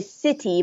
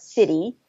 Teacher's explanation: I think this is maybe typical of American English, but changing that T to a D.